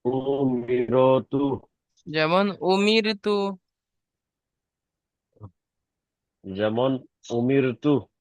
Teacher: এসছে, তাই র কে বারিক করে পড়তে হবে। আর তায়ের উপর পেশ এসছে, পেশটি হলো হারাকাত, হারাকাত তাড়াতাড়ি পড়তে হবে, টান দেওয়া নিষেধ।